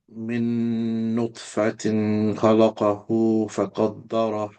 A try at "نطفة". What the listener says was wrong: Make the ta qalqala prominent. نطفة نط. What you're doing is there's too much force and you're not letting your tongue bounce that like one bounce. So it's that the qalqala. نطفة.